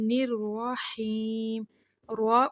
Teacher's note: یہاں پہ دونوں جگہ پہ را کے اوپر زبر فتحہ آ رہی ہے تو را جو ہے وہ پر موٹی پڑی جا رہی ہے